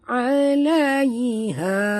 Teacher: ha sini ha simpul, jaga bunyinya daripada dalam halkum. Ha dua harakat mat tabi'i.